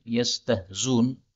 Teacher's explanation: hamzah boleh dihapus menjadi yastahzun, seperti biasanya